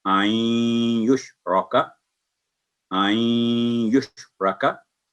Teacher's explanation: नून साकिन के बाद या है तो यहाँ हाफ गुन्ना जैसे होता है